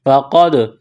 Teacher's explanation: قاف کو موٹا کرنا ہے، دال ساکن ہے، قاف کو دال کے ساتھ ملانا ہے، قلقلہ کریں گے دال پر